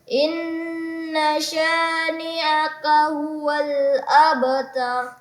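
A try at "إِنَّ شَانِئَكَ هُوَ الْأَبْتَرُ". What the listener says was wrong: Ya, inna sya juga sama dilamakan lagi. In-nya dengan in tadi. Inna, ini inna sya. Bisa dihitung dengan dengan jari, kita hitung dengan 4 harakat atau 3 harakat. Inna syani'aka huwal abtar.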